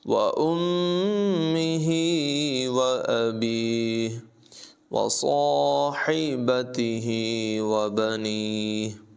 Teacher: میم مشدد میں غنہ کریں گے